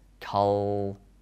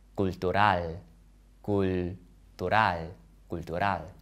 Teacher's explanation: In my accent of English, the L sounds in cultural are dark L's, cultural. But in Spanish, the L is light, cultural, cultural, cultural.